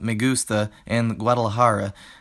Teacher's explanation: you'll see that the unstressed vowels are getting reduced like they would in English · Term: vowel reduction